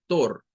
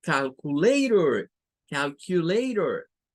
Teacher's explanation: las vocales con la R al final de las palabras tienen este comportamiento en el inglés y es que suenan con un schwa siempre. No va a sonar a tor, sino que va a sonar a pur, más suave.